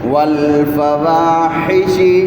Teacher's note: ہا کی آواز بھی عین کی طرح گلے سے